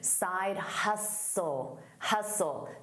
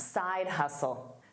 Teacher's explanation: The T is silent